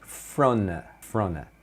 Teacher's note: O front of é comum eles falarem frona, frona. Então o T aqui some